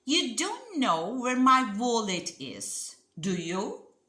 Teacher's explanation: if you rise your intonation it sounds like a real question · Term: rising intonation